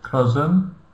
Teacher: S we pronounce like Z, cousin, and we don't pronounce I.